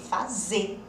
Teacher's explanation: O R a gente simplesmente jogou fora.